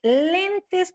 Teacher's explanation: Si nos vamos a graves, lentes, pues hago más el esfuerzo en len